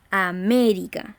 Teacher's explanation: La palabra América, la primera palabra que encontramos en el cuadro, es una palabra que si la vemos la pronunciación decimos América, es decir, cargamos la voz en la antepenúltima sílaba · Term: palabra esdrújula